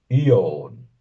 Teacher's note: la o se pronunciaría como una bastante a profunda y redondeada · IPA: 'i.ɒn, / 'i.ɒn /